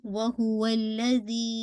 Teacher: ठीक है, तो ये मद्दुल जायज मुनफसिल है. हमजा नेक्स्ट वर्ड में आ रहा है. 4 to 5 काउंट हम इसको स्ट्रेच करेंगे.